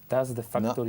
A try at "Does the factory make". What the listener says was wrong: no quiero ver la lengua para nada.